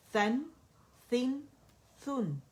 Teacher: اور جو نون آخر میں ہے نا, اس کے مخرج پہ پورا جانا ہے, تاکہ آپ کو ایک کاؤنٹ کا جو اس کا فطری غنہ ہے وہ ناک میں سنائی دے